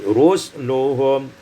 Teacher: Pada ayat yang ke 22 rusuluhum iskanus sin disukunkan sin menjadi rusluhum